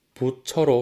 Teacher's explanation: 첫 번째 음절의 종성인 티읕이 치읒으로 교체되었기 때문이죠. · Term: 국외음화